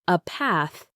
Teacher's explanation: with her accent, the A sound was very broad and sounded like bath to him.